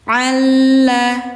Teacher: [Musik] Alam najahu ainain alam naj pantulin naj alla lam sukun bertemu lam tasydid ini hukumnya idgam mutamasilain Ya. Jadi lam pertama dimasukkan ke lam kedua.